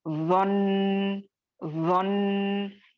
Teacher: अगर मैं जोन्ना पे स्टॉप करूंगी, तो मैं कैसे स्टॉप करूंगी, वन, वन, ये आपको नब्र नहीं हो रहा है, नूने मुशद्दद है, स्टॉप कर रहे हैं साकिन करके, तो उसको गुन्ना करके ही स्टॉप करेंगे